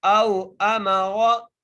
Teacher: میم کے اوپر بھی زبر ہے، را کو موٹا کر کے پڑھیں گے